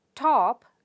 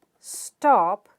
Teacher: Even if a syllable is stressed, a voiceless stop is unaspirated if it follows the sound sa.